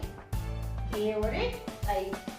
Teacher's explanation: कंठ तालु से बोले जाने वाले हैं हमारे ए और ऐ। ए और ऐ ये बोले जाते हैं कंठ तालु से।